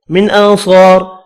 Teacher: اب اس را کو وف کی صورت میں پر پڑھنا ہے کیونکہ را ساکن ہوگا وف کی صورت میں اور پچھلا حرف زبر والا ہے